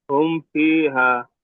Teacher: মিম সাকিনের পরে বা মিম ছাড়া অন্য অক্ষর ফা এসেছে, তাই মিম সাকিনকে বিনা গুণায় জাহির করে তাড়াতাড়ি পড়তে হবে। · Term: ইজহারে সাফাবির